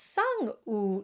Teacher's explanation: the u sound is very rounded with the lips it's placed quite high and quite forward but it should still have lots of space on the inside